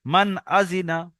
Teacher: তাই নুন সাকিনের আওয়াজকে বিনা গুন্নায় জাহির করে পড়তে হবে। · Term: ইজহার